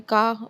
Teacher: ठीक है, अब रियल वर्ल्ड एग्जांपल्स लिखे हुए हैं कि regional accent pronouncing the word car को बोस्टन और यूएसए में का बढ़ते हैं, आर साउंड को क्या कर देते हैं, ड्रॉप कर लेते हैं